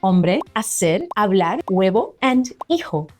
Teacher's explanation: In Spanish, the H is completely silent. That's right, you don't pronounce it at all. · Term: silent H